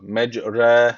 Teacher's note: bu imale yazısı olmasa burada ra diyeceğiz direkt ama ne oluyor bu imale yazısından ötürü bu ra harfi inceliyor